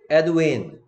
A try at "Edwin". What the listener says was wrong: 자꾸 없는 글자 소리, R 소리나 이상한 거 집어넣으려고 그래.